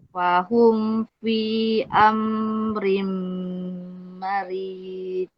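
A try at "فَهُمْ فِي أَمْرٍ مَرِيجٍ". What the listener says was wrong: Fi tidak cukup 4 harokat. Fahum. Yang fi tadi ni panjang kakak tu tidak cukup 4. Mat jais.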